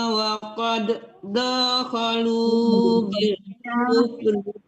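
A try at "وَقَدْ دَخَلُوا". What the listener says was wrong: Pindah, waqad dakhalu itu nggak boleh dipantulkan dalnya karena di depannya juga dal ya. Waqad dakhalu ditahan diteruskan ke dal, jangan dipantulkan dalnya.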